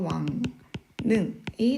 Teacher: 왕릉은 앞에 나와 있는 이 이응 받침 때문에 뒤에 있는 리을이 니은으로 바뀌죠. 그래서 왕능이 되겠습니다.